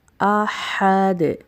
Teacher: ہا کی ادائیگی درست کیجیے، وسط حلق سے نکلے گا یہ. احد، دال کے اوپر وقف کی صورت میں قلقلہ ہوگا